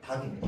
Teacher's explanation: 닭은 원칙에 맞추어서 리을이 탈락하고 기역만 발음상으로 납니다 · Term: 리을 기역